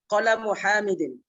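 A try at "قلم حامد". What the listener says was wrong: Kalamu hamidin, good.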